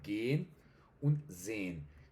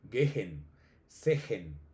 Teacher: Yo creo que de los dos ejemplos clave para, para el alargamiento de vocales va a ser el verbo gehen, to go, y sehen, to see. Entonces, como la H está en medio de las es en esas dos palabras, en gehen y sehen, entonces pues por eso se alarga, es como si tuviéramos tres es ahí metidas.